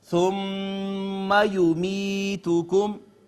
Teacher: میم مشدد یہاں پہ غنہ ہوگا ڈیفینیٹلی